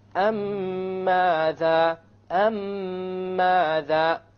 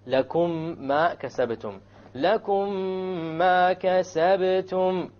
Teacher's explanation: When you have a silent meme and is followed by another meme, then you merge them together, and you do this with a ghunna. You merge the first meme with the second meme and do a ghunna on it. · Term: idgham shafawi